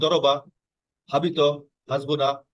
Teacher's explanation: আসলে এগুলি কিন্তু মাদ হবে না, এগুলি কিন্তু হারাকা খুব দ্রুত করতে হবে